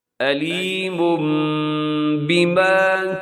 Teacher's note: آگے جو علیم یہاں آپ نے غنہ کرنا ہے، آواز کو اپنے ناک میں لے جانا ہے